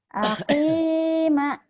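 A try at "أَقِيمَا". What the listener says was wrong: Panjang banyak.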